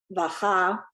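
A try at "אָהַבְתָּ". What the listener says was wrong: The ahavta. You can't swallow up the syllables. Ahav. So you got to get all those syllables in.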